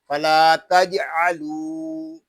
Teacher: लाम को एक अलिफ तक खींच कर पढ़ेंगे क्योंकि यहाँ अलिफ मद्दा हो रहा है। जीम साकिन में कलकला होगा, इसको तज नहीं पढ़ेंगे बल्कि तजअलू ऐसे पढ़ेंगे।